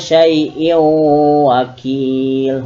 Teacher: cara membacanya adalah dengan memasukkan bunyi in pada huruf waw, sehingga hilang n-nya. Jadi dibaca syai'in wakil, hukumnya idgham biguna.